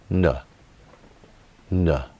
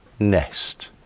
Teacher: this is the voice consonant sound no to create the sound the air is blocked from leaving the mouth by pressing the tip against the tooth ridge and the sides of the front of the tongue against the